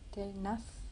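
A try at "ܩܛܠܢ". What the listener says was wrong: Pourquoi tu veux absolument mettre un N là? Katelna, Katelat.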